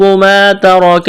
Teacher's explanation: الف مدہ ہے, ایک الف کے برابر کھینچنا ہے. را کو موٹا کرنا ہے.